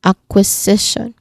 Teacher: The primary stress is on the third syllable.